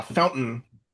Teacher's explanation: a lot of uh English speakers they do not say fountain with the t sound. They say fountain and they kind of skip over the t. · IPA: ʔ